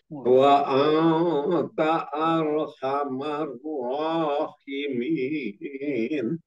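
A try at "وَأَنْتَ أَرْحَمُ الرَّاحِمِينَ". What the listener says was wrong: domahnya Pak domah diganti fathah itu tadi arhamur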